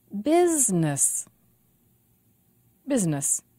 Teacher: business two syllables and the stress is on biz